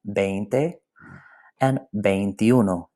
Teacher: So here are the 2 that have a diphthong in them, veinte and veintiuno. That E and that I, they flow into, the E flows into the I.